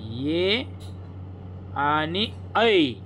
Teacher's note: कंठाचा आणि तालूचा उपयोग होऊन जे वर्ण उच्चारले जातात त्यांना कंठ तालव्य म्हणतात